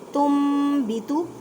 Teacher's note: تم بیتو، نون ساکن کے بعد ہے با ہے تو یہاں پہ اقلاب کا قاعدہ کرنا ہے، مینس کہ نون ساکن کی آواز کو میم میں بدل دینا، گنہ کرنا ہے